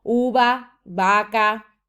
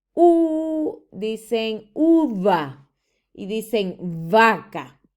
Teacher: B y la V, ¿verdad? La pronunciamos de la misma manera.